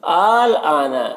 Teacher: ثم اذا ما وقع آمنتم به۔ آل آنا، یہاں پر جو مد ہے یہ مد لازم ہے، اسے 3 سے 4 الف کے برابر کھینچ کر پڑھتے ہیں